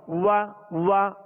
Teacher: واو کا جو مخرج ہے پہلے اس کو مخرج سے ادا کریں گے. واو دونوں ہونٹوں کی گولائی سے ادا ہوتی ہے. وا اب زبر ادا ہوئی.